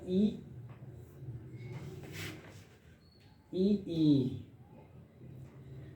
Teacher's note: तालव्य से जो बोलने वाले स्वर है जिनका इस्तेमाल तालु में होता है